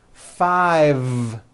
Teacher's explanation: I said 5 with a voiced V.